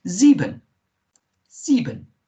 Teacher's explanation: s in german is pronounced like a zed z